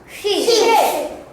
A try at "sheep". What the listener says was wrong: Not S. Sheep.